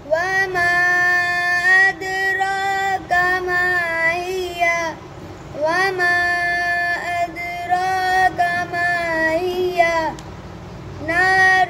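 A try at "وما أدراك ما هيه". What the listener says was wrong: मद पूरी नहीं की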